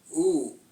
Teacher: oo is kind of like O, except a little bit more spread out, and a little bit smaller opening